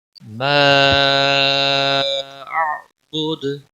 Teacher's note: وقف کی صورت میں جب دال ساکن ہوگا اس پر قلقلہ بھی ہوگا